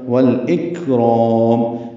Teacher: ہے، والاکرام، لام ساکن پہ اظہار، اک کاف ساکن پہ ہمس، را پر پڑھیں گے اور میم پہ ہونٹ بند کر لیں گے، اظہار شفوی ہوگا